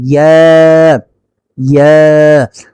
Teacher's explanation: জিহ্বার মধ্যখান তার বরাবর উপরে তালুর সঙ্গে লাগিয়ে ইয়া উচ্চারিত হয়